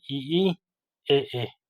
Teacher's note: वे स्वर जो जीभ के अगले भाग से बोले जाते हैं उनको क्या कहते हैं अग्र स्वर कहलाते हैं